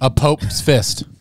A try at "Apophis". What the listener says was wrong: Lose the P, add an F.